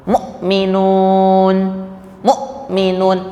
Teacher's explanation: Suaranya terhenti itu suara huruf hamzah